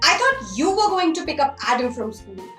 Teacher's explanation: going to pick up adam from school so in this example picking up adam from school is something that was already discussed hence the rising intonation